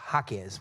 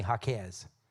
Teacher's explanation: It's Jaquez with the accent on the first syllable.